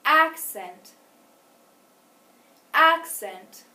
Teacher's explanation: we said the first syllable longer, louder, and higher.